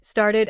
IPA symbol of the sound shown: ɪd